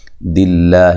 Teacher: یہ لفظ اللہ سے پہلے حرف پر زیر ہے، اس کو باریک پڑھیں گے، لفظ اللہ کو موٹا نہیں کرنا